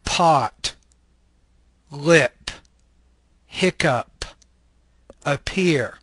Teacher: This is a bilabial stop voiceless consonant.